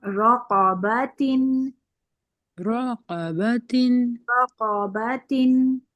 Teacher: را بھی پر اور قاف بھی پر. رقبة. رقبة رقبة.